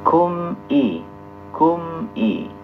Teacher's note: mimnya dibaca izhar ya. Dan tidak boleh mantul karena sebagian ada yang membaca mim dan nun sukun itu mantul-mantul.